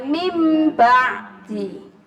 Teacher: Jadi huruf nun berubah menjadi m. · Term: iklab